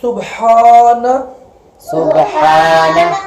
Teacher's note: ہا کے ساتھ الف ہے، اس کو ایک الف جتنا کھڑا کرنا ہے